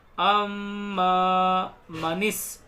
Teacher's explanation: میم میں غنہ کریں گے، تشدید آ رہی ہے